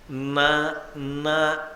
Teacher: నా నా అన్నాను అనుకోండి, నాలుక చివర భాగము దంతపంక్తి యొక్క వెనక తాకితే తప్ప నకారము పలకదు